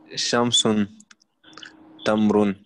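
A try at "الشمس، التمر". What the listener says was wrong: Juste, il faut juste lire les noms définis. Donc, Ash-Shams, At-Tamr.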